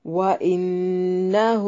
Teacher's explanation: وَإِنَّهُ نون مشدد پہ غنہ ضروری ہے